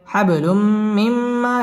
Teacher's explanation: নুন সাকিনের বামে মিম আসছে মিম ইদগামে বা গুন্নার হরফ গুন্না সহ মিলিয়ে পড়তে হবে